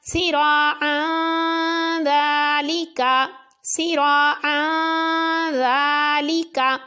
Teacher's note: اب 2 زبر کے بعد ذال ہے تو اس لیے 2 زبر کی آواز میں غنہ کر کے پڑھا